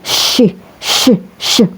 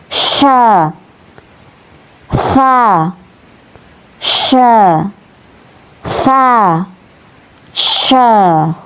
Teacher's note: Namun di sini harakatnya fathah maka dibaca sya ya. Cara melafalkannya tebal. besar seperti ee mengusir ayam syh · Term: huruf syin